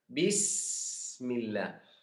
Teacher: Huruf sin, sukun. Sifatnya harus kita tahan waktu sukun.